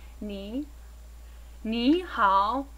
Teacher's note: This 2nd tone that you see and hear when pronouncing ni, as in ni hao, is also known as the rising tone.